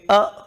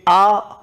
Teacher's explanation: जैसे हम बोलेंगे अ और एक बोलेंगे आ, तो ए की अपेक्षा दीर्घ आ में दुगना समय लग रहा है